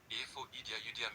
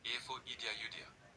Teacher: As a question, Efo idia yudia. With rising tone means do you eat food?